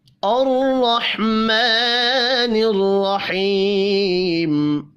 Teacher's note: را زبر کی وجہ سے پر پڑھا جائے گا، ہا ساکن پر قلقلہ نہیں کرنا۔